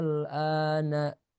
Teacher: Kemudian membaca huruf lam sukun tanpa ada hentakan pada huruf hamzah ya. Jadi tidak ada hentakan misalkan al-ana tidak enggak.